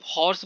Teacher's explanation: Right, like आप हॉर्स बोलते हैं तो हॉर्स में आपका कहीं भी रुकावट नहीं है, हा में कहीं भी मुंह में रुकावट नहीं, स्टिल एक कॉन्सोनेंट है। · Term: एस्पिरेट एच